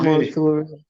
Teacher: If the stem of the verb ends in R, there will be two R sounds before the future endings.